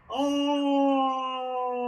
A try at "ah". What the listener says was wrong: That's not chest voice. That's head voice. Come back to your speaking voice. Smile. Ah. Yes, I want you back in chest resonance because it's a false sense of security.